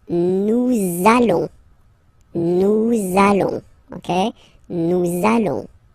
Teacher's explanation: okay, and if you, so final S not pronounced, and then if you are purist, and I'm sure you are, you want to make this beautiful and little liaison, so this little link between the words, so it does mean that you will have to pronounce this z sound